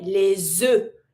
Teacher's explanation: When you want to say eggs plural, of course you make your link with the S and your vowel, les. So you pronounce your S to link it. FS is mute.